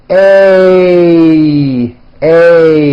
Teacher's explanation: this sound is a combination of two vowel sounds. You start with an A, and then you glide up to an E. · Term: A as in age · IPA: eɪ